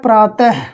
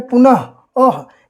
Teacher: और इसके अंतर्गत आने वाले जो शब्द होते हैं उसमें प्रायः देखेंगे इसके अंत में हकार की उत्पत्ति होती है, या ह शब्द आता है या हकार की उत्पत्ति होती है। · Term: विसर्ग